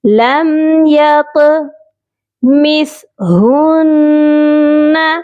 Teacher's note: زبان کی جو نوک ہے اوپر والے دانتوں کے کنارے سے بہت ہی سافٹلی ٹچ کر کے سا کی ادائیگی کی جاتی ہے